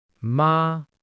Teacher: If I say ma with a high flat tone, it means mother.